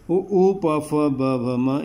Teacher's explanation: उ प फ ब भ म, इनका ओष्ठ होता है। बिना ओष्ठ चिपकाए आप उ या ओठों को हिलाएं आप ये अक्षर नहीं बोल सकते, इनका स्थान ओष्ठ होता है। होंठ होता है तो ये ओष्ठ कहे जाते हैं।